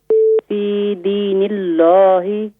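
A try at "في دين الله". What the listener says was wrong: یہاں اللہ کے نام کو باریک کریں، موٹا نہیں کریں. فی دین اللہ.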